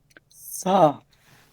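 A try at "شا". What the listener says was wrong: না, এই যে সা বলেন না, আপনি নিজে দেখেন না, একটু খেয়াল করেন, জিহ্বাটা দাঁতে আসতেছে, সা, এই দাঁতে আসতেছে, জিহ্বা দাঁতে আসবে না কোনোভাবে, কোনো দাঁতে আসবে না। শা, শা, শা, জিহ্বাটা ভিতরে নিয়ে তালুতে, শা, শা, শিন।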